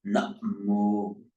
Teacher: The Thai, by the rules of Thai phonetics, they put a glottal stop, namo.